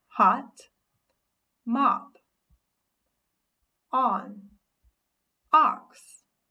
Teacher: the short sound for o is ah